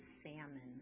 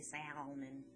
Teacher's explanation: you don't really say the l i don't say salman so it's a salmon but i still